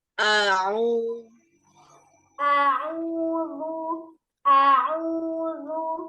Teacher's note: Jangan langsung masuk ain. Hamzah dulu.